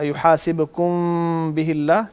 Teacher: جب میم ساکن کا ہم نے اخفاء کرنا ہوتا ہے نا, چونکہ میم کا مخرج ہے ہونٹوں کا خشک حصہ, بالکل, تو خشک حصے کو نرمی سے ملائیں گے